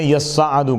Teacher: یصعد اصل میں یتصعد تھا، تا کا ادغام کیا گیا صاد میں